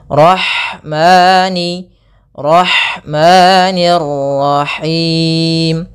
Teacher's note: Kemudian ada lafal ha, alirkan nafasnya pada lafal ha karena di sini ada hukum tajwid berupa ada sifat huruf ha yang itu sifat hamas, mengalirnya nafas.